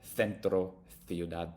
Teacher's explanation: in Spain if the SE is followed by an i or an e it will be more pronounced like the th in English